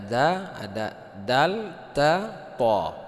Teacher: Nah, yang pasti qalqalahnya itu digugurkan karena sudah bertemu dengan huruf yang hampir sama. Itu dal dengan ta itu keluarnya di tempat yang sama.